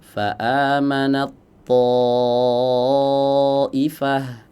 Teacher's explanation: Berikutnya huruf ta yang dileburkan masuk ke huruf tho ya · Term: idgham mutajanisain